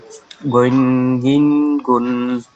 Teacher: আমি বলি গইন আলিফ দুই জবর গন, গইন দুই জের গিন, গইন দুই পেশ গুন, গন গিন গইন, গুন। মনে হবে কি আওয়াজটা আপনার গইন, গলার মধ্যে থেকে আসতেছে